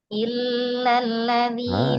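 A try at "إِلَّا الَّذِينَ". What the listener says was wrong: Setengah mengalir. Illal kepanjangan. Illalladzina.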